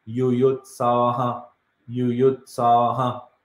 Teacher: you're releasing the air, rest of the air, by echoing the previous vowel.